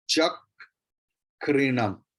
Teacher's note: so ka will be doubled at first. Extra ka will be pronounced.